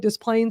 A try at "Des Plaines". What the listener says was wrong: You don't pronounce the S. I notice, a lot of people will pronounce the S, but it's actually silent. But Des Plaines, you do pronounce the S. So don't let that confuse you.